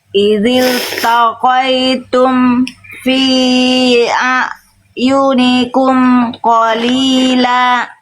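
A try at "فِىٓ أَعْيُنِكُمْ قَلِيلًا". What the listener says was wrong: Fi di sini panjangnya bukan cuma 2, tapi 4 atau 5. Ada tanda alisnya, simpelnya gitu.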